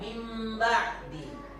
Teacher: Ada bunyi ditahannya, mim sukun ditahan dengung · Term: iklab